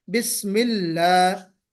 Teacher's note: लाम मोटा ना हो, बल्कि लाम बारीक पढ़ा जाए